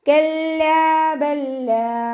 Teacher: സുക്കൂനായ ലാമിനെ അടുത്ത ലാമിലേക്ക് നമ്മൾ ലയിപ്പിച്ചെടുക്കുക. ഇദ്ഗാം മുത്തമാസിലാൻ, ഒരേ മഖ്റജിൽ നിന്നും വരുന്ന 2 അക്ഷരങ്ങൾ തമ്മിലുള്ള ഇദ്ഗാം